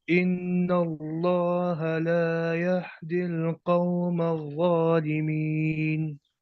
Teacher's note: یہ اس میں جو یہدی میں ہا ہے نا، یہ ہا ہے سینے سے ادا ہونے والا ہا